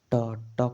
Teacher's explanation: ट का उच्चारण स्थान मुर्दा है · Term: मुर्धा